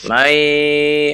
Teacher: Wa minhum, ada mim bertemu dengan mim, maka ditahan 2 harokat. Mai, ada nun bertemu dengan ya, ditahan 2 harokat ya